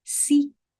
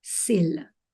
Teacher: C'est le même phonème, mais tendu ou relâché.